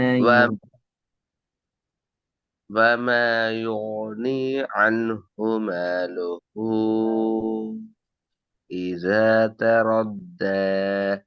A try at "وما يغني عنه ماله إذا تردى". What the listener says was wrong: யுனி அல்ல பிரதர், யுனி அல்ல, யோ. நீ வாவை மேலுக்கு தூக்குங்க. வா உச்சரிக்க நேரம் அது தடிப்பம் விளங்கணும். ஹெவியாக ஓதுறது, வாய் புல்ல அடித்து ஓதுறது.